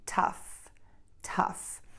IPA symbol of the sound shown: tʌf